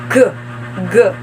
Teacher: as voice velar stop